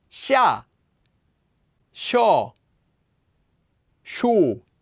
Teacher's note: Notice it's not si, it's she, with an SH sound.